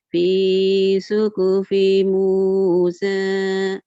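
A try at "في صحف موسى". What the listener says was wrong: I-nya ketahan tuh jadi panjang. Padahal nggak panjang loh Bu.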